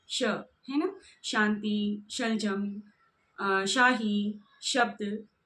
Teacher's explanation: श तो इस प्रकार से तालु और जिब्बा के बीच में घर्षण उत्पन्न होता है और श का उच्चारण यहां से होता है। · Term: तालव्य श